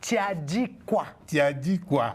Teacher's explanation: Il y a le U qui devient le I.